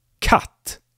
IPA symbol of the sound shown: k